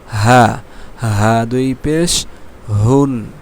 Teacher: হা একেবারে গলার ভিতর থেকে কোন প্রেশার কোথাও পড়বে না।